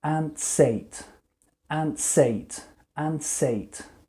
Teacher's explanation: But what I will say actually is I will put the S onto the beginning of the word ate. And I will say, ants ate, ants ate, ants ate.